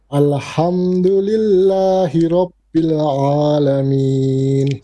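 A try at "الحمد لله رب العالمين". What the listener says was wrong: So your first alif, al. Make it more light, more flat. Al, not alham. You have a bit of alham. Al. Alhamdu. Alhamdu. You sing saying al. There's a bit of full mouth. Not too much, but it's slight. So al. Al. So you're making the lam a bit heavy. Alhamdu. Alhamdu.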